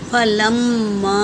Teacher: فا اور لام حرکت ہے، میم پر تشدید ہے، اس کا غنہ ہوگا اور اس پر مد ہے، مد منفصل، تو اسے 3 سے 4 الف کی مقدار کھینچیں گے۔